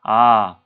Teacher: 아 라는 발음을 할 때 입을 벌린 상태로 처음부터 끝까지 계속 벌린 상태로 있죠.